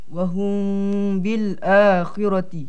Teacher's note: Mim diikhfakan di sisi ba serta didengungkan 2 harakat. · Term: ikhfa syafawi